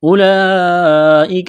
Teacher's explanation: یہ لمبی مد ہے، 4 الف کے برابر کھینچنا ہے